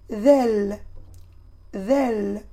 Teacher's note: on touche le bout de la langue avec les dents supérieurs en prononçant zel zel alors on touche légèrement le bout de la langue avec les